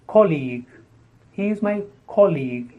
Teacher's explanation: the stress on the first syllable and the second sound is long